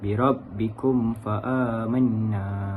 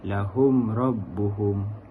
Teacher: Ia berlaku apabila huruf mim sakinah bertemu dengan huruf hijaiyah selain huruf mim dan ba. Cara bacanya ialah dibaca dengan jelas huruf mim tanpa dengung. Contoh yang pertama di dalam ayat 193 ialah birabbikum fa'amanna. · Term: izhar syafawi